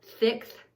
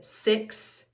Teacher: a bit of a frontal Lisp so that tongue is sticking out just a little bit